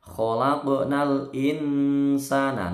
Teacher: Khalaqnal insana, nunnya nun sukun ini ketemu sin, bacaan ikhfa atau dibaca samar